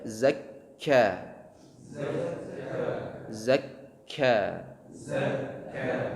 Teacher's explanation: kaf keluar dari pangkal lidah menyentuh dengan atau bertemu dengan langit mulut yang lunak dan yang keras, ya. Jadi di atasnya pangkal lidah itu ada langit mulut yang al-azmi namanya dengan al-lahmi yang bertulang atau yang keras dengan yang berdaging atau lunak.